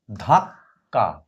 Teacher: উপরের কটা হালকা উচ্চারিত হবে, বোঝা যাবে, কিন্তু খুব অল্প সময়ের জন্য উচ্চারিত হবে। নিচের কটা বেশি সময়ের জন্য উচ্চারিত হবে। ধাক্কা, ধয়াকারে ধা, ক হসন্ত, কয়াকারে কা, ধাক্কা।